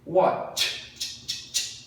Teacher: Não tem voz, então é watched. Som de T.